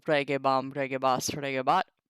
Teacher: Observe the final short E of the stem is lengthened before the tense sign ba